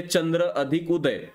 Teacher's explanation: याच्यामध्ये अ आणि उ पासून ओ तयार होतो, हे या चंद्रोदय उदाहरणामध्ये आपण पाहू शकतो.